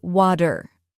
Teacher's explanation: the T in words like water or butter sounds more like a soft D. So instead of saying water, Americans often say water. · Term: flap T sound